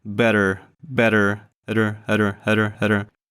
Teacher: This double T, it sounds like D. Basically, your tongue does the same thing. It bounces up and down.